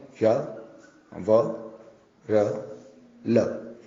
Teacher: ये अंतःस्थ वर्ण इसलिए है क्योंकि इनका उच्चारण करते समय वायु मुख से बाहर निःसृत नहीं होती है, वायु मुख के अंदर ही विद्यमान रहती है।